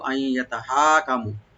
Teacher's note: নুন সাকিনের পর যেহেতু ইয়া আসছে এখানে ইদগাম উইথ গুন্না , আই ইয়ানি গুন্না সহকারে আমরা নুনটাকে ইয়ার সাথে মিলাবো, সংযোগ